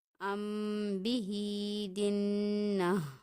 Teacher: یہاں پہ ہم دیکھیں میم ساکن ہے، میم ساکن کے بعد با آ رہا ہے، یعنی کہ یہاں پہ غنہ خفیف سے اسے پڑھا جائے گا، ادا کیا جائے گا۔ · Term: اخفاء شفوی